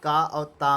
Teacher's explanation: का और ता में अघोष अल्प प्राण ध्वनि पाई जाती है।